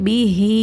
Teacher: யாசரா இருக்குது அதனால யாவை கொண்டு இரண்டு ஹரக்கத் நீட்டி ஓதுங்க